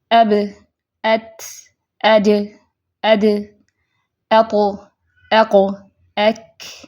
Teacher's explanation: ان کی ادائیگی میں کیا ہے؟ کم وقت لگتا ہے کیونکہ آواز مخرج میں بند ہو جاتی ہے، جاری نہیں رہتی۔ جبکہ 5 حروف متوسطہ جو ہیں ان کی وقت کی مقدار حروف شدیدہ سے زیادہ ہوتی ہے۔